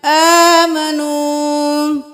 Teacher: کھڑی زبر ہے ایک الف کے برابر کھینچیں